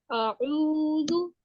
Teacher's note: जाल पेश, जाल इस तरह अदा होगा कि इसकी जो आगे के 2 दांत हैं और जो टंग की जो टिप है, जुबान की जो टिप है, वो आगे से 2 दांतों के साथ मिलेगी, फिर ये अदा होगा।